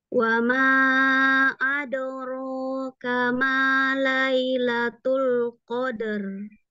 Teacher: Ro-nya ya, adoro ya, dinaikkan. Pangkal lidahnya dinaikkan.